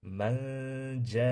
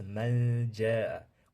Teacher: J ning mahrajiga nunni yashirib yuboramiz. Manja. Man emas, manja.